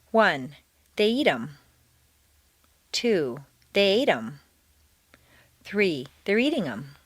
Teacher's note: you now stress the verbs · notice that in fluent speech the th of them is frequently dropped